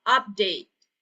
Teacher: suku kata terakhirnya adalah TI, tapi tetap tidak ada perubahan saat dilafalkan tidak menjadi D ya